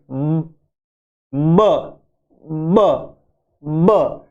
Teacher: और बाइलेबियल है, दो होठ काम आते हैं, ब ब। और ये प्लोसिव है, हवा एकदम से विस्फोट से बाहर निकलती है